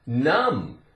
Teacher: in words that end with MB the two consonants together m and b the B is silent no sound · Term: silent consonant